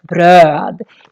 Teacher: the O with two dots, is very long because we have just one consonant coming after